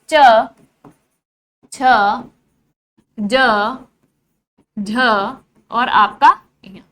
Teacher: मध्य भाग जो है जीभ का वो तालु को स्पर्श करेगा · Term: तालव्य व्यंजन